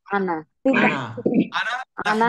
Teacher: আমরা আনা আনাতে নুন আলিফ নাহনু টান। এই আনাতে নুন আলিফ টান হবে না, শুধু আনা, না Ana. হবে না, আনা Ana.